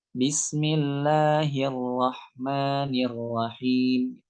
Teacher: kita berikan takrir itu sesuai dengan porsinya yaitu kita memberikan ataupun kita mengangkat ya lidah kita ujung lidah kita ke langit-langit cuma sekali aja Bismillahirrahmanirrahim enggak perlu sampai hirahimirahim tapi cuma sekali aja naiknya ya